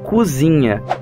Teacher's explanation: as vogais pretônicas e tônicas são altas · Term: vogais altas